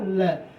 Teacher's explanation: तालु के वो हमारे मूर्धा के अग्रभाग को जो है जाके स्पर्श करती है, और हमारी जो प्राण वायु है वो मुख के दोनों साइड से, दोनों ओर से जो है बाहर की तरफ निकलती है, तो हमारा वही जो है पार्श्विक कहलाता है।